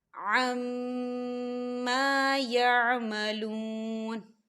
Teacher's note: یہاں میم مشدد ہے تو یہاں پر غنہ بھی ہوگا، اور ما الف مدہ بھی ہو رہا ہے، خالی الف سے پہلے زبر ہے، تو ہم اسے 2 حرکت کے برابر کھینچ کے پڑھیں گے۔